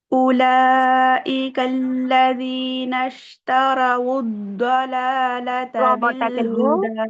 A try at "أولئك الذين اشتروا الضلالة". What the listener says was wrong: رو موٹا کریے، رو کو موٹا کریے. اولئک الذین اشتروا الضلالة.